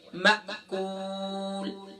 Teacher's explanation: حمزہ ساکنہ ہے، یہاں جرک ہوگا، یہاں جھکا کے ساتھ پڑھیں گے